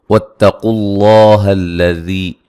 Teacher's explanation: قاف کو موٹا ادا کریں گے، لفظ اللہ کو موٹا ادا کریں گے، اس سے پہلے پیش ہے۔